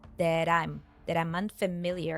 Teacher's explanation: it turns into an American tea sounding like du